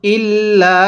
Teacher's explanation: এই লামের মধ্যে কিন্তু আমরা তিন আলিফ টান দিব